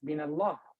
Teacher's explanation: What happened to the Hamza sound? Disappears. It's gone. Silent. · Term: connecting Hamza